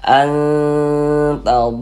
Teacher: kita dengungkan bunyi nun sukunnya kita samarkan, kemudian kita dengungkan. Kita tahan suaranya, kita panjangkan sejenak. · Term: ikhfa hakiki